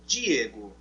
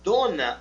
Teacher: a língua bate lá em cima nos dentes superiores